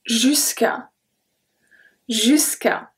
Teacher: So just remember that it's there to have a good flow of pronunciation, so don't make a stop between the two words. You need to pronounce it in one word.